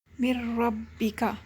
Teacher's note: اب یہاں پہ آپ دیکھ سکتے ہیں، جیسا کہ میں نے بتایا کہ را اور لام میں بغیر غنہ کے ادغام ہوتا ہے، اب یہاں پر ہم صرف ادغام کر رہے ہیں، غنہ نہیں کر رہے۔